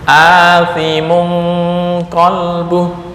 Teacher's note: Ya, dengung karena ini ikhfa. Kenapa ikhfa? Tanwin bertemu dengan qaf.